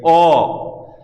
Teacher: বিবৃত অর্থাৎ পুরো মুখ আমি খুলে দিচ্ছি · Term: বিবৃত উচ্চারণ